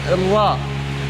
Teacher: Huruf ra adalah keluar dari ujung lidah menempel pada gusi 2 gigi seri atas. Nah, hampir sama sebenarnya seperti dengan nun, tapi dia lebih masuk, lebih naik ke atas.